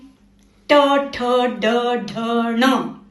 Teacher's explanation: इसमें जीभ को थोड़ा पीछे मोड़कर टप से आवाज निकालनी पड़ती है। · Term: जीभ मोड़ने वाली लाइन